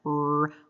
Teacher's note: retroflex R, like r, where the tip of the tongue goes up and back. Or sometimes some individuals actually bunch their tongue.